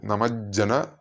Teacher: രണ്ട് ജകാരം വന്നതുകൊണ്ട് നല്ലൊന്ന് സ്ട്രെസ്സ് ചെയ്തിട്ടാണ് ആ രണ്ട് ജകാരങ്ങൾ ഉച്ചരിക്കേണ്ടത്